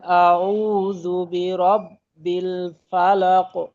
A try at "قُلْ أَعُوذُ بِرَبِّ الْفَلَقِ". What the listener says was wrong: লাক, এখানে ধরাটাও আর একটু ক্লিয়ারলি মজবুত, ফিরতি আওয়াজটাও আর একটু মজবুত। মধ্যম কলকলা তো, কলকলা হরফ আয়াতের শেষে তাসদিদ ব্যতীত থাকলে ওইখানে আমরা জানি যে একটু কলকলার পরিমাণটা বেশি হয়, মধ্যম। আচ্ছা, আর একটা বিষয় খেয়াল রাখবেন, কলকলা করতে গিয়ে যেন ঠোঁট গোল না হয়। কো ও মুখী না হয়ে ক জবর মুখী কল করা।